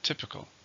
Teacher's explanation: How many syllables? Typical. 3, stresses in the first.